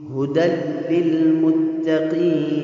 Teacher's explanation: ھدی میں جو حکم ہے وہ ادغام بغیر غنہ کے ہے، تنوین ہے اور تنوین کے بعد حروف ادغام میں سے لام آیا ہے تو ادغام بغیر غنہ کا ہوگا۔